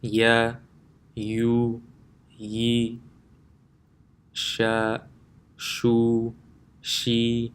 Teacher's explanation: The makhraj of Ya and Shin is the center of the tongue when touching the palate.